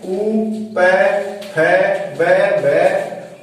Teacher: इनका उच्चारण स्थान है ओष्ठ